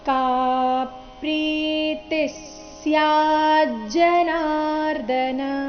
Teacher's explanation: ಎರಡನೇ ಚರಣದ ಕೊನೆಯ ಶಬ್ದ ನೋಡಿ ಅದನ್ನ ಬಿಡಿಸಿ ಹೇಳಿದಾಗ ಅದು ಸ್ಯಾಜ್ ಜನಾರ್ಧನ ಸ್ಯಾ ಆದ ನಂತರ ಅರ್ಧ ಜಕಾರ ಇದೆ · ತಿ ನಂತರ ಇರೋ ವಿಸರ್ಗದ ಉಚ್ಚಾರಣೆ ಅರ್ಧ ಸ ರೀತಿ ಬರಬೇಕು.